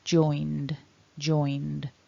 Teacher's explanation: a cluster of and with a voiced d joined joined so you want that voicing there as always our · So looking at the past tense and past participle then, because the n ending is there on join, when we add our ed, it becomes a cluster of nd with a voiced d